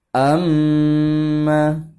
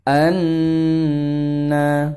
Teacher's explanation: Kemudian di sini ada catatan juga, huruf mim bertasydid, ya, dan nun bertasydid membacanya dengan ditekan dan ditahan lebih lama disertai gunnah